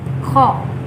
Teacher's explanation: untuk huruf Kho sendiri ini keluarnya dari ujung tenggorokan. Kho.